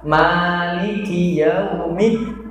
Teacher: ketika kita masuk huruf dalnya itu kan ada tasydidnya, juga agak dihentakkan